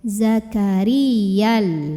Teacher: kalau wasol berarti ya nggak pakai huruf mad enggak pakai Alif berarti pendek